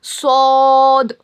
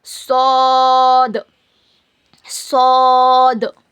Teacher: सौद को हम मोटा पढ़ेंगे। सौद को क्या करना? मोटा पढ़ना। मुंह भर के पढ़ना ऐसा। सौद और लास्ट में द जैसी आवाज आना।